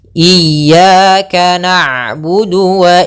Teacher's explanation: Pada lafal ain di sini ainnya sukun. Maka ain itu sifatnya bainiyah. Apa itu bainiyah? Yaitu tengah-tengah antara dialirkan suaranya atau ditahan suaranya.